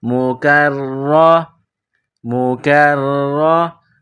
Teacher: را کے اوپر زبر ہے، را کو موٹا پڑھیں گے ، اور تین دندانے والی چیز تشدید ہے، را مشدد ہے،